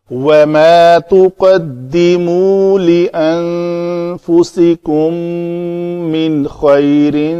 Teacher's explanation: یہاں پہ نون ساکن کے بعد خا تھا تو اظہار کیا ہے ہم نے